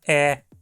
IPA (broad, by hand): ɛ